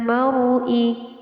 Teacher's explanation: ma yufarriquna bihi bainal mar'i adalah hukum bacaan ro. Di sini ro-nya dibaca tebal karena didahului dengan harokat fathah